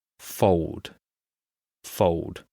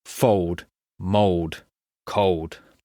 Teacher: Fold has an L in it, F-O-L-D. In British English, we skip this L sound.